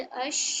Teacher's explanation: जुबान का जो बीच का हिस्सा है वो ऊपर के मुकाबिल तालु से थोड़ी दूर हो जाएगी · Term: शीन